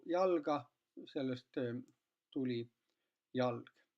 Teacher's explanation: sellises kontekstis pika esisilbi, rõhulise esisilbi järel teine silp, teine rõhutu silp, mis on lühikene, sellest kadus tüvevokaal ära